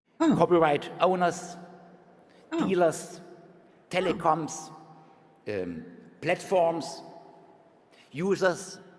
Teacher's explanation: a German speaker is likely to devoice that Z and turn it into a voiceless s.